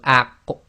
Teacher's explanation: Now if you try to say this, you go aq, okay, and you try to say it without an actual echo, you'll find the top of your back of your throat and the back of your tongue come together when you make the aq sound. Now in order to get the proper sound of the qaf to come out, you have to separate.